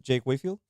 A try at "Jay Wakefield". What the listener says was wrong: Yeah, Jay Wakefield. It's not Jake. It's how you said. It sounds like you said Jake.